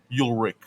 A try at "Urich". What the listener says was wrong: No. No, not Ulrich. Yeah, there's no L. URICH.